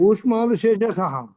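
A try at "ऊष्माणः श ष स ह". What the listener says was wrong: శేషాసాహ అని చెప్పకుండా షా, షా, ఇదేమో షా, ఇది షా, ఇది స, తర్వాత హ, ఇలా చెప్పాలి. షా, ఇదేమో షా, షా. ఈ టంగ్ని మధ్యలో, ఈ టంగ్ని ఎక్కడ పెట్టాలి?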